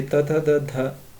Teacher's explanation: दंत्य, दांतों के मूल से